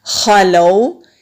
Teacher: واو لین کو نرمی سے پڑھا جاتا ہے، جھٹکا نہیں دیتے اور کھینچتے بھی نہیں ہیں